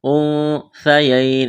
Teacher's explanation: وا کو موٹا کرنا ہے، لام کے ساتھ ملانا ہے، انثیین، اخفا کریں گے، نون ساکن کے بعد سا ہے، سا کو نرم کرنا ہے